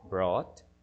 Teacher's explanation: En el grupo 3 está el que les decía en los ejemplos, los que terminan en UGHT y que su pronunciación es ought, una O alargada y T